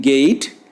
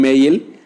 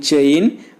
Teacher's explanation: glide from front half close to a centralized front unrounded vowel just above half close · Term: unrounded diphthong